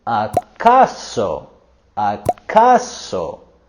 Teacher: Here, they're going higher with their voice and intonation with acaso, acaso, and allá, allá.